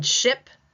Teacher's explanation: The sh in ship, no vibration.